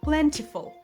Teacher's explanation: The T here is very soft, almost like a D or a quick flap.